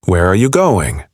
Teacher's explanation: questions, with who, what, where, when, why, your voice usually falls at the end.